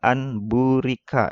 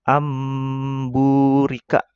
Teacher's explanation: mengganti nun mati dan tanwin menjadi suara mim dengan merapatkan bibir dan didengungkan ya, mendengung ya. · Ya, agak didengung ya. Jadi nun mati ketemu ba itu dibacanya mim berubah ya. Jadi ini kalau ini dibacanya amburika. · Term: iklab